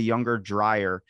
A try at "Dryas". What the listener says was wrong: Dryas. Dryas, kind of like if it was US, but it's actually AS, so it's Dryas.